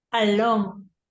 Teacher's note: we have the stress in the second syllable